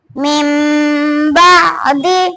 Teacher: نون ساکن کی آواز کو میم ساکن کی آواز سے بدل کر ایک الف کے برابر کھینچ کر ناک سے گننا کر کے پڑھا جائے گا، اس کو ابدال کہتے ہیں، قلب اور اقلاب بھی کہتے ہیں۔